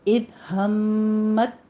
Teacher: ता का हमस ख़त्म कर देना है, इसको मुदगम कर लेना है। ठीक है, मुकम्मल तौर पर इसको मुदगम कर लेंगे, ता की आवाज़ त्वा के बीच में। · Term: इदगाम